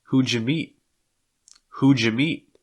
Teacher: when you have these d sounds before the y it's going to make almost like a j sound we see this like in judge or bridge who jamie who'd